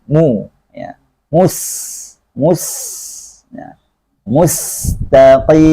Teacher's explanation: Di sini ada lagi dhamma di huruf mimnya. Maka bibir harus monyong ke depan karena dia menyatu dengan makhraj mim, yaitu dua bibir. Maka di sini mu ke depan, mu sesuai dengan makhraj dhamma karena sudah menyatu dengan makhraj mimnya.